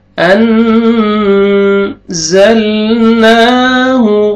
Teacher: ان نون ساکن کے بعد حروف اخفاء میں سے زا ہے، آپ نے اخفاء کرنا ہے۔ انزلناہ، زا کو زور سے پڑھنا ہے۔